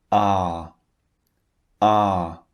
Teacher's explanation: The shape of the mouth is not too wide open, but it's not relaxed either. It's in the middle. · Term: long